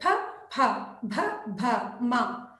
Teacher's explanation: ಪವರ್ಗದ ಅಕ್ಷರಗಳು ಫ, ಫ, ಭ, ಭ, ಮ ತುಟಿಗಳ ಸಹಾಯದಿಂದ ಉಚ್ಚರಿಸಲ್ಪಡುವುದರಿಂದ ಓಷ್ಠ್ಯ ಅಕ್ಷರಗಳು